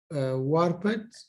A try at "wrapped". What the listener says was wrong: no, wrapped, wrapped. W I guess silent. ال W بيكون ما بينقرب. Okay, silent. Wrapped.